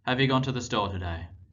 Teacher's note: questions are marked by a falling off of Pitch at the end of the phrase